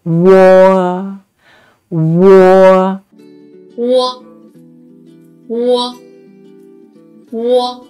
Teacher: When pronouncing wo, we need to say wu first and then quickly glide to say o. So, wo. And make sure the o sound is much longer and louder than the u sound.